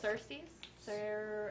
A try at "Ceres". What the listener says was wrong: Cersei's? Cersei's? Where do you guys see 2 S's in that? And a W and a T? Ceres. Ceres.